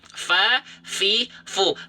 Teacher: ujung gigi seri atas kita disentuhkan dengan bibir bawah bagian dalam yang basahnya. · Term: huruf fa